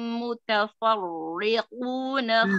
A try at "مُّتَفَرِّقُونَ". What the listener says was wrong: Tidak tebal karena di harokatnya kasroh. Mutafarri. Farri. Ya, tipis ya.